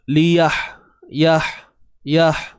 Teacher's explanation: Ha pedas ni di bahagian tengah kerongkong